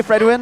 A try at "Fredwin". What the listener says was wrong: like, and you did say Fredwin, but when you say it quick, it sounded like you had a lisp.